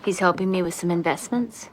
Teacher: el sonido de la th lo podemos omitir Cuando tenemos una palabra que termina con th y la siguiente que inicie con s Así que este ejemplo en vez de pronunciarlo como with some